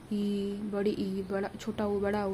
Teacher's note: समवृत स्वर, इसमें मुख हमारा बंद होता है